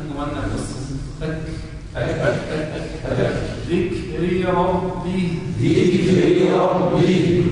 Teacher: فلا بد من إخراج همس مع الكاف. الهمس هو النفس.